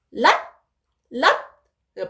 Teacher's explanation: 이 랏은 거성이지만 이 받침 시옷이기 때문에 랏, 랏 빨리 끝내주는 거예요. 랏 이렇게 길게 하는 게 아니라 랏 이렇게 좀 빨리 끝내주는 그게 이제 입성입니다.